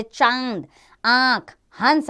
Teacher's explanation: जिन वर्णों के उच्चारण में वायु नाक एवं मुख दोनों से निकलती है वे अनुनासिक कहलाते हैं। इसका चिन्ह ऊपर चंद्र बिंदु है, जैसे चांद, आंख, हंस आदि, इनके ऊपर चंद्र बिंदु आता है।